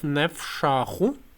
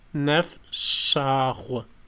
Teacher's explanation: In Abzakh we have nefshachu with retroflex. In the meantime, standard Adiga and standard Kabardian have postalveolar